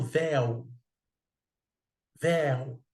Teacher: a boca se abre o timbre é aberto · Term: ditongo aberto